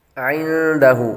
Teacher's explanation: عندہ، یہاں پر بھی عین کی آواز نکالیں گے، اس کے بعد نون ساکن کے بعد دال حروف اخفاء میں سے آ رہے تو غنہ کریں گے